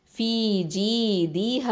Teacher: ஹ ஃபதா அலிஃப் மத்து ஹ 2 ஹரக்கத்தை நீட்டணும்